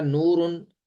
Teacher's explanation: آخری حرف کو ہم نے ساکن کر دیا، اور آخری حرف سے پہلے واو مدہ ہے ، واو ساکن ما قبل پیش ہے، تو یہاں واو مدہ